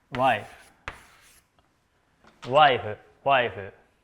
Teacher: We keep the diphthong sound Ai